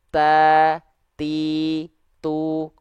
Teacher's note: bunyi percikan nafasnya itu ketimpa sama bunyi vokal a i u harakat dari huruf tnya